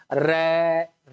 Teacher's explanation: उसको प्लुत कहते हैं जैसे हम मान लो बोल देंगे र र को हम लंबा खींच रहे हैं क्योंकि अ स्वर है इसको हम लंबा ले रहे हैं तो यह भी प्लुत स्वर हो जाएगा